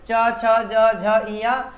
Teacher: इसको तालव्य वर्ण बोलते हैं, यह तालु से बोला जाता है।